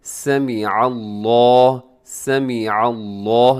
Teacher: اب اس کے اندر بھی دو تین مسٹیک ہو جاتی ہیں، ایک تو سمیع اللہ پڑھ دیا جاتا ہے، سمیع اللہ نہیں ہے بلکہ عین ہے، تو عین کا بھی پتہ چلنا چاہیے کہ عین ہے